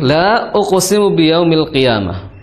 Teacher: Di sini dihukumi mad jais ya, panjangnya adalah 4 atau 5 harokat. Boleh 4, boleh 5.